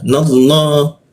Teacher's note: Keluarnya o tapi bibirnya tetap a dia. Nallah, ha, masuk ke ha, tenggorokan bagian bawah dia.